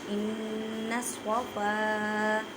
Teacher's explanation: نون مشدد گنہ کریں، صاد کو ادا کرتے وقت خیال رکھیں کہ سین کی آواز نہ آئے کیونکہ حروف مستعلیہ موٹے حروف میں سے ہے، الف سے پہلے زبر ہے تو الف مدہ کا قاعدہ کریں۔